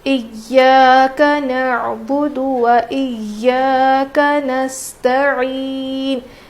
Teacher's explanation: عین ہے تو نکالنا ضروری ہے ورنہ حمزہ پڑھیں گے تو معنی بدل جاتے ہیں